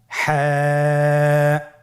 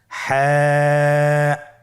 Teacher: হা হরফটি উচ্চারিত হবে কণ্ঠনালীর মধ্যখান হতে। গলা চিপে ধরে আপনি উচ্চারণ করুন।